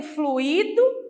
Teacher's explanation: quando for um verbo no particípio eu vou pronunciar com i mais forte